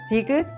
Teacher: 디귿 has the soft T sound somewhere in the middle of T sound and the D sound